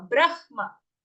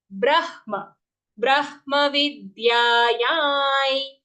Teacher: So the half ha comes first, brah, and then full ma